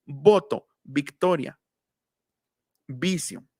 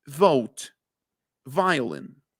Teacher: Y en inglés sí ya se dice labio dental. Dientes de arriba, labio de abajo.